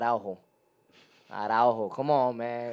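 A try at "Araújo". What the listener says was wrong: It's Araujo. He's Brazilian. Araujo. When they're Brazilian, they don't say their J's like that. They're R's. They say their R's like that.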